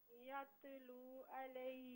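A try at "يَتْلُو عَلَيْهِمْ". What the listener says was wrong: تا پر حرکت نہ دیں. یتلو علیہم. یتلو نہیں، تا پر بالکل بھی جنبش نہ دیں.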